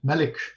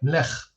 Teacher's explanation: The same is true for the word for king, melik, which in Syriac becomes like melech. So that first vowel is gone, and the k has become a ch.